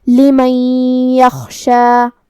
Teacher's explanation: ہمیں یہ نون کو یا میں ملا کے غنہ اور تشدید کے ساتھ یہ حکم کو ادا کرنا ہے · کلمت یخشا میں یہاں خا ہے تو ہمیں خا کو بھاری آواز میں ادا کرنا ہے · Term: ادغام بغنہ